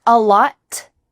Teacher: Really, this is something that's reoccurring in American English, that final T is stopped. Your tongue is at the top of your mouth.